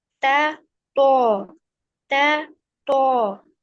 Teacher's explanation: ता बारीक से पढ़ते हैं और तो मोटी आवाज से